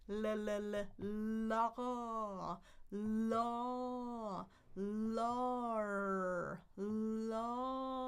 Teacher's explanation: I'm starting with my tongue on the tip at the very beginning for the L.